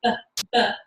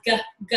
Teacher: a B sound, which is made with the 2 lips, B, B, has a particular idea behind it, versus a G sound, which has G, G, a guttural sound, right?